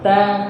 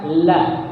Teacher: Ta itu perbatasan antara gigi dan gusi. Ya, ta ujung lidah kita ketemu perbatasan gigi dan gusi. Kalau la itu ujung lidahnya di bagian langit-langit yang kasar. La agak ke belakang.